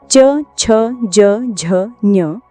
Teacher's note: यह सभी व्यंजन तालव्य कहलाते हैं। क्योंकि इनका उच्चारण तालु यानी मुख के ऊपरी छत के अगले भाग से होता है। च वर्ग को स्पर्श संघर्षी व्यंजन भी कहते हैं।